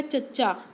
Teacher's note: ਚਚਾ ਬੋਲ ਕੇ ਦੇਖੋ ਕਿ ਇਹ ਆਪਣੇ ਤਾਲੂ ਦੇ ਨਾਲ ਬੋਲਿਆ ਜਾਂਦਾ ਹੈ ਇਸ ਕਰਕੇ ਇਸਨੂੰ ਕੀ ਹੈ ਤਾਲੂ ਧੁਨੀਆਂ ਵੀ ਕਿਹਾ ਜਾਂਦਾ ਹੈ।